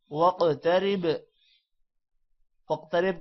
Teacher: واقترب کا قوف موٹا ہوگا اور قوف پر قلقلہ بھی ہے اور با پر بھی قلقلہ ہے